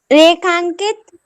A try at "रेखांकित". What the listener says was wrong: रेखांकित, आ फिर अम आ गया ना वो, ठीक है। अम नहीं आना चाहिए।